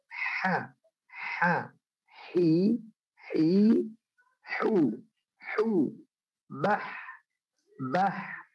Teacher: Adapun huruf yang kedua adalah huruf yang berasal dari makhraj kedua, tempat keluar yang kedua adalah tengah tenggorokan, ya, atau kita sebut tadi wastul lisan, wastul halq, ya, wasatul halq. Itu adalah huruf ha, ya, harus bersih, jangan ada kha, jangan, tapi ha, hi, hu, bah.